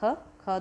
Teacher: दूसरा है महाप्राण है कंठे है और अघोष है